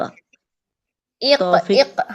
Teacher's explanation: ہم آواز کو ہلا رہے ہیں، زبر نہیں اب پڑھ رہے